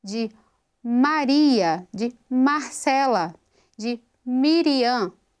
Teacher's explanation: Eu tenho o impacto, o contato entre os lábios, mas aqui eu tenho vozeamento, então eu já tenho som de voz e ela é nasal. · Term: consoante nasal